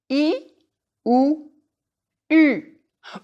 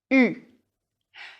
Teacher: Your job now is to say E and then round your lips as though you were saying the oo of goose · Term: French U